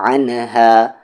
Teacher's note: عین middle throat سے